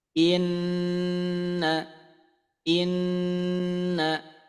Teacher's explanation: Anggap saja Nun sukunnya tidak ada masuk ke Nun yang bertasdid